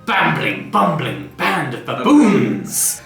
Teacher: the falling intonation, the firm, authoritative intonation.